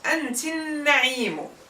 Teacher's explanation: You don't hear the a of the definite article.